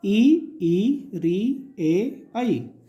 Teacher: जिन स्वरों के उच्चारण में जीभ का आगे का भाग कार्य करे क्या कहलाता है, अग्र स्वर कहलाता है